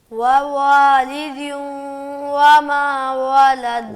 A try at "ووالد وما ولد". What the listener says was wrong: واو کو صحیح ادا کرو, ہونٹوں کو گول کرو.